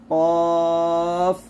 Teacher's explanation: কফের ক্ষেত্রে সম্পূর্ণ জিহ্বার গোড়া লাগবে আর কাফের ক্ষেত্রে একটু